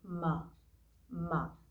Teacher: जब आप माँ बोलते हैं तो आपके होठ जो होते हैं ना वो आपस में क्या होते हैं, आप एक दूसरे पे चिपकते हैं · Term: ओष्ठ